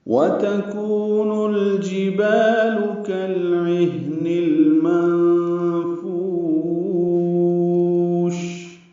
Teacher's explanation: واو ہونٹوں کی نا تمام گلائی سے ادا کریں گے، دو واو ہیں. کو واو مدہ ہے، یہ لمبا ہے، دو حرکات